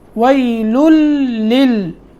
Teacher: یہاں لام کو لام سے پھر لام کو لام سے ملانا ہے